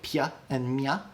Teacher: If you say that, the y sound is coming from your tongue, dropping from the roof of your mouth down after you say the sound. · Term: palatal consonants